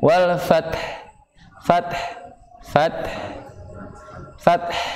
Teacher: Kemudian karena dia waqaf, ha-nya juga sukun, namun jangan dihilangkan huruf ha-nya.